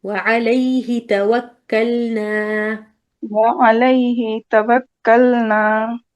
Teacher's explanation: ہی پہ ٹائم نہ لگائے کیونکہ ہی کے بعد مد اصلی نہیں ہے، فوراً توکلنا پہ جانا ہے.